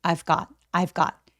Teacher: 근데 I got 아니고 I've got I've got 이렇게 got처럼 자음 앞에서의 V 발음들은 아주 가볍게 F처럼 그리고 어차피 중요한 키워드가 아니기 때문에 약간 가볍게 F처럼 발음해 보세요